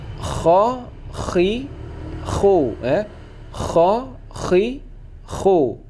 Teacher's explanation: Kha ini getarnya lebih berat, bahkan perih tenggorokan saat kita membaca. Bunyinya yaitu kha. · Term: huruf kha